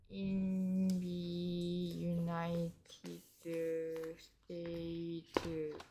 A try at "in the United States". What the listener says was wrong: 인디가 아닌데 자꾸 여기 인디라는 거. In the United States.